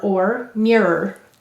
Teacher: notice or is saying it schwa sound er mirror because it's unstressed the stress is here mirror good